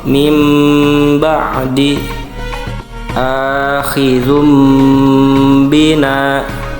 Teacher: Keempat iqlab, yaitu merubah pembacaan nun atau tanwinnya kepada huruf mim sukun